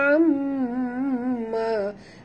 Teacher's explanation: Mim bertasydid, wajib dengung, wajib al-gunah